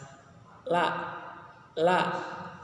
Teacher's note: Kemudian ada bainiyah, ada istifal, kemudian ada infitah, dan juga izlaq, kemudian ada inhiraf. Jadi penyebutan hurufnya itu punggung ujung lidah bertemu gigi muka yang atas.